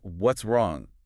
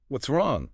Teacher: if you drop the pitch of your voice, slow the words down slightly, and soften the consonants, it becomes a blanket of comfort